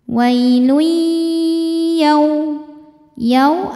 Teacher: ada wau sukun didahului harakat fathah cara bacanya dilembutkan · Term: harfulin